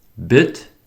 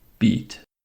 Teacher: This is the lax vowel. The tongue is high, but the rest of the mouth is relaxed. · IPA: /ɪ/